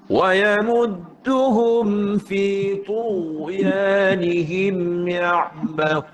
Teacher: tebalkan huruf ta dan huruf ghain. Maksud saya angkat pangkal lidah.